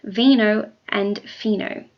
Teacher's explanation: these are both labiodental fricative meaning that the sound is made by touching the upper lip